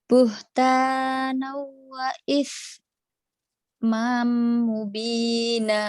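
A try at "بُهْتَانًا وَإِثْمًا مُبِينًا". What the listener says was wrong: Kenapa isnya belum bisa ragu? Imamnya jadi panjang. Kan nggak ada panjang. Tadi ketemu mim idgham biguna. Buhtanan wa mubina.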